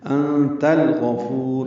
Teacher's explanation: انت، یہ دوسری مرتبہ آ رہا ہے، اخفا ہے، تا کو الغفور کے لام سے ملانا ہے، اظہار قمری ہے۔ انت الغفور، غین پر پڑھیں گے، فو واو مدہ ہے، 2 حرکات لمبا کریں گے، را کو را سے ملانا ہے، ادغام شمسی ہے۔